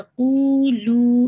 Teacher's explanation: قو اور لو دونوں کو آپ نے 2 کاؤنٹ پڑھنا ہے